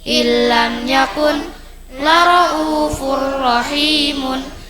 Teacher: Nun sukun atau tanwin bertemu huruf lam ra, tekan tanpa dengung.